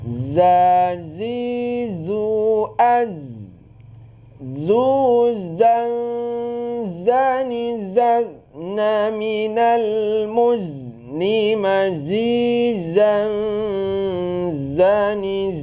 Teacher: Jahar juga tidak ada angin ya. Bunyi za tidak ada angin ya. Jadi beda antara ja za. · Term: huruf za